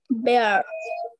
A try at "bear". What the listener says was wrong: Bear bola jabe na, no. Alada bhabe na, ekshathe uchcharon korbo. Bear na.